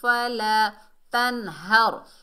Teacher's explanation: الف خالی سے پہلے زبر، الف مدہ ہے، 1 الف کی مقدار کھینچ کر پڑھیں گے۔